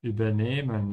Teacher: we emphasize nehmen because this is not a separable verb